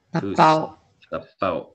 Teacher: you just cut it off at the end of the W. You don't let it glide. There's a glottal stop there.